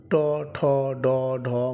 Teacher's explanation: উচ্চারণ স্থান মূর্ধ তাই এগুলিকে মূর্ধ বর্ণ বলা হয় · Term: মূর্ধন্য বর্ণ